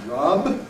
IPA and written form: rʌb (rub)